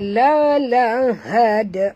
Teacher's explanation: dia mati pada dal, jadi lantunkan bunyi dia qalqalah sughra